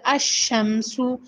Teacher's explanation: لام کے بعد شین آیا ہے، شین حروف شمسیہ میں سے ہے، اس وجہ سے یہ لام نہیں پڑھی جا رہی